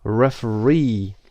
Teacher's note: the third syllable is stressed